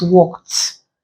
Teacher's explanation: The verb is ending in a voiceless consonant sound. So the ED at the end is pronounced T. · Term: consonant T